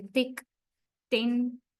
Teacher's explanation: Blade of the tongue rises and touches the upper teeth. T like when you say thick, thin and the other dental sound. · Your tip of the, rather than the tip, a little bit after the tip area, right, of the tongue, that means blade of the tongue. Blade of the tongue rises and touches the upper teeth.